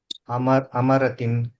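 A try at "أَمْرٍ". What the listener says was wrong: లేదు మీమ సుకూన్ చేసి త్వరగా చదవాలి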